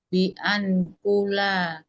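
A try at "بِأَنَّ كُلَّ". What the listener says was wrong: Bi'an. Karena setelahnya isim bukan an. Kalau setelahnya mudhari bi'an yaqra'a baru tuh sukun. Ini tasydid bi'an kullah isim bukan fi'il. Isim menyeluruh.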